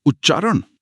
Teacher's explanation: त के बाद च है तो त भी आधा च बन जाएगा।